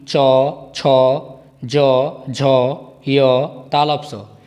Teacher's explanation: ई, च, छ, ज, झ, य, तालव्य स। इन सभी वर्णों का उच्चारण स्थान तालु है।